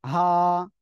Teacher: এই অক্ষরটা তাহলে উচ্চারণ হবে হলকের শুরু থেকে